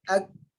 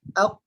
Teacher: Kalau kita tengok gambar yang kongsikan, qaf dia paling dalam, paling hampir dengan anak tekak ialah huruf qaf dalam. Kaf masih lagi pangkal tapi bukan yang paling dalam, di atas sedikit daripada huruf qaf. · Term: huruf kaf